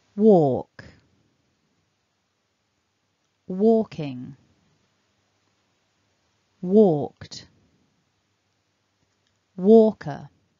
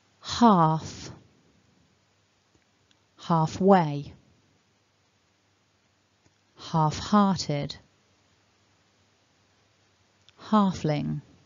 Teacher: there is no l in the phonemic script so we don't want to pronounce an l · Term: silent l